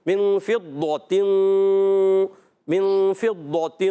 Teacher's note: ضاد کو موٹا رکھنا، پھر اخفا کا غنہ ہوگا. اس اخفا کے غنہ کو اہل عرب قرۂ کرام جو ہوتے ہیں، بڑے بڑے قرۂ کرام، وہ بھی پر پڑھتے ہیں، پر کی طرف لے کے جاتے ہیں آواز کو، ساؤنڈ کو.